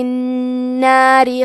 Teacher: کلمت الناری کے آخری میں را کے نیچے زیر ہے، یہاں را کا حکم ہے ترقیق تو ہم حرف را کو پتلی آواز میں پڑھیں گے